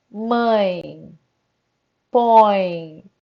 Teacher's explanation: é só encostar para você sentir a vibração falem mãe põe percebam como vai vibrar aqui no nariz é porque é uma palavra com som nasal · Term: ditongos nasais